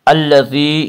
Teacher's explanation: الذی یا مدہ وہ یا جو ساکن اس سے پہلے زیر ہو، یا مدہ کو 1 الف کے برابر کھینچ کر پڑھیں گے